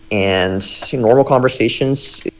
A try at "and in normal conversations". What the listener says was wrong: I think you said and in normal conversations, but the in kind of came out like a ing again. So I think that's twice. So that might be an interesting thing, is check your in sounds. They probably float to ing sometimes.